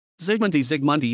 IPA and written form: zɨɡˈmuntɨ (Zygmunty)